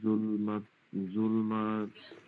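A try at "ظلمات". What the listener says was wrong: দুল মাতুই হবে ভাই। ঝুল মাতি না, ঝুল মাতু।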